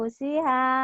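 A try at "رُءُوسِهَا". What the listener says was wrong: Bukan. Yang panjangnya ini nih. U-nya doang. Ru'u. Ru'u siha gitu.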